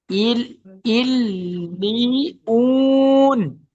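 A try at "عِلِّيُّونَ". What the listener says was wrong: উন না, ইউন, ইয়া ওয়াও পেশ, ইউ, ইল্লিয়ুন।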